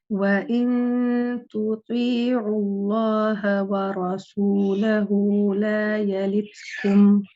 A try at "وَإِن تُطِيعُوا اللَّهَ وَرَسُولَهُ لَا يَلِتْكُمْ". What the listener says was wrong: Your seen can be lighter, and also the ha at the end of the name of Allah can also be lighter.